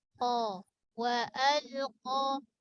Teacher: Qa tebal. Dekatkan dengan pangkal lidah kita nak dekat dengan lelangit lembut.